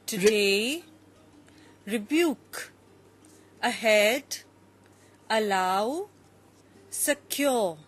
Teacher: you have first an unstressed and then a stressed